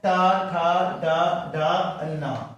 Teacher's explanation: ट वर्ण आपका मूर्धा से उच्चारण होते हैं, इसलिए इसको मूर्धन्य बोला गया है। मूर्धा से होते हैं ट ठ ड ढ न आपका।